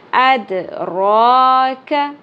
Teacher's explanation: वमा अदराक दाल साकिन पे कलकला रॉपुर होगी, खड़ी ज़बर 1 अलिफ के बराबर खींचनी है